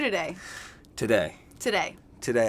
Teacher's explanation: always the first syllable is reduced to the schwa sound